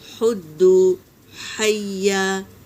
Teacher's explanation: ہا کو حلق سے ادا کریں گے اور ہوا کے ساتھ